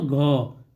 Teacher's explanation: घ बोलते हैं तो घ, तो क्या होता है हमारे कंठ से आवाज निकल रही है, इसलिए यह क्या है कंठ ध्वनि है